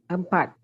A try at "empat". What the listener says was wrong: Okay, now, empat, pronounce the T as well. Empat.